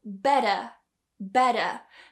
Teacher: you take your tongue and you very quickly tap the top of your mouth almost like you're doing a duh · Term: tap or flap